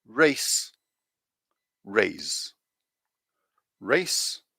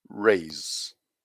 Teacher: the difference between these sounds is that the second one is voiced so we use the vibration from our voice box to to